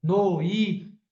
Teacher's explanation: um ditongo decrescente ó noi o O som tá descendo e fica fraco